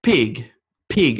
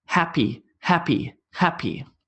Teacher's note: it's just purely lips and you're shooting air out you should be able to feel on your hand / /